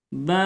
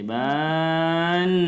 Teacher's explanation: dinabarkan terus tahan, nun bertasdidnya ditahan ya